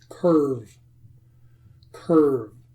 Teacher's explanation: did my lips touch? No. So it must be a V sound.